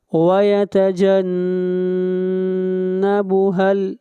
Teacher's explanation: نون کے اوپر غنہ کریں گے، آواز ناک میں جائے گی